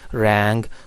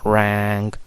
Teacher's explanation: ये जो साउंड है ये नेज़ल साउंड है, तो अब जब आगे नेज़ल साउंड आ रहा होता है तो उसकी वजह से जो प्रीवियस जो है वो वावल होता है वो भी थोड़ा नेजलाइजेशन उसमें आ जाती है, तो इंस्टेड ऑफ सेइंग रैंग कुछ लोग कहते हैं रैंग।